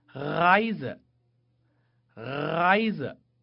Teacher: 第一种就是发小舌音▁r